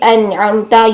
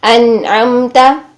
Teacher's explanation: نون کے اظہار کے وقت نون کی آواز میں بھی لام کی طرح توسط پایا جاتا ہے